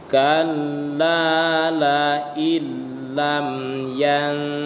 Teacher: nun mati bertemu dengan ta itu dibaca gunnah. Jadi bukan kalla la illam yantahi, bukan itu ya.